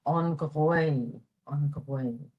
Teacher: G-H at the beginning of the word is pronounced like a gh, way in the back of the throat.